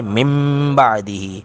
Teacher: نون ساکن کے بعد با آ گئی تو نون ساکن کو میم سے بدل کر من کو مم بنا دیا